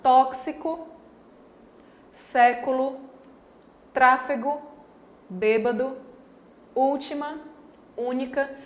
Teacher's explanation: nessas palavras a tonicidade recai sobre a antepenúltima sílaba aqui está antes da penúltima então é uma palavra proparoxítona certo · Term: palavras proparoxítonas